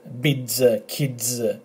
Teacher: they're pronounced 'ds' as in 'kids', 'bids'. It's a 'd' and like a 'z' after